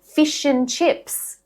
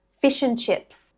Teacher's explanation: Australians, actually most native and advanced English speakers, drop the d from and constantly in connected speech.